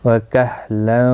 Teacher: تنوین کے بعد یرملون کا واو ہے، ادغام مع الغنہ ہوگا، غنہ کے ساتھ پڑھیں گے